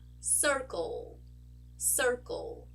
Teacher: you can hear the dark l sound in my throat